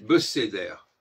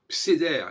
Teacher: Si je ne respecte pas le Sheva, les consonnes sont séparées de façon syllabique. C'est une grave erreur.